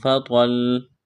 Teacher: تو کو موٹا کرنا ہے، لام کے ساتھ پلس کرنا ہے، لام کے اوپر تشدید ہے